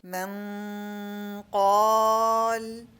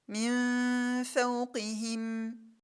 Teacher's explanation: Notice that the sound of the Gunna is heavy when Ikhfaa is with a heavy letter. من قال. And notice that it's light with a light letter.